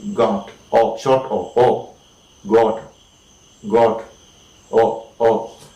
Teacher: And that sound o is again a back sound. Alright, it is produced with the back of the tongue